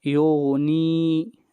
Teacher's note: اگلی آیت وما، ما کو لمبا کریں گے ایک الف کے برابر، یہ الف مدہ ہے. یغنی، نی کو بھی لمبا کریں گے ایک الف کے برابر، یہاں پر یا مدہ ہے